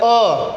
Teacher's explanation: अ कहाँ से आ रहा है, लग रहा है कि आपके कंठ से आवाज आ रही है